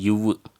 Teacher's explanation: மேல்வாய்ப்பல்லை கீழுதடு பொருந்துவதனால் பிறக்கும் எழுத்துக்கள்